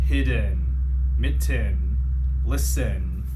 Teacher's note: there's the e sound but it sounds kind of like that short u sound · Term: schwa sound